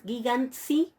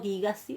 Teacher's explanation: La nutau ante la sigma cae y eso produce el alargamiento compensatorio de la alfa del tema en una alfa larga. Por eso yo tengo gigasi con alfa larga.